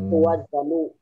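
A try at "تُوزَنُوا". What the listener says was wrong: Gak usah dijadikan fa'ala yufa'ilu, Pak. Antuzanu. Tuzanu.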